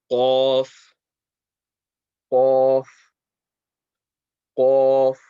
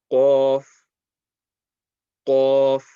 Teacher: the sound is going to come from the back end of the mouth, not the throat. It's not going to be like kha.